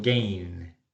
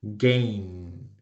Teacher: Cuando esto ocurre en inglés, los hablantes del español a menudo lo convierten en N de novio